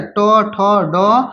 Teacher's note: मूर्धा से आता है ट वर्ग